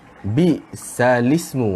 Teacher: Maka hamzah tu dia tak ada bunyi, lam sahaja yang tinggal bunyi. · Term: hukum naqal